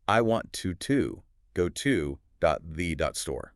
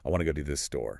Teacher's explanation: The stressed words are want, go, and store. To keep the rhythm bouncing between those three words, the native speaker squishes to go to the into a rapid mumble.